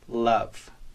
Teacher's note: your tongue drops down after the L and sends love pouring out your mouth until the voiced fricative V fades back into silence